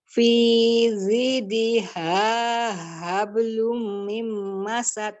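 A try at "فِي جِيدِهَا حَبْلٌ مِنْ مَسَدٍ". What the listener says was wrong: Ji bukan zi. Ji. Ji. Bukan zi. Nggak boleh zi. Ini lidahnya harus kena ke langit-langit. Fiji, ji.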